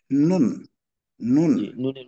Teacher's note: জিহ্বার আগা তার বরাবর উপরের তালোর সঙ্গে লাগবে